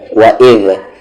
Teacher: واو پہ زبر و، ای کو زا میں اذ، ذال کا مخرج یعنی ذال کا ایگزٹ، زبان کا کارنر اور سامنے والے اوپر کے دانت کا کارنر